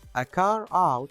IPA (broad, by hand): ə kɑːr aʊt